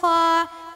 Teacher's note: ख का मखरज अदनाय हलक यानी हलक के मुंह की तरफ वाला हिस्सा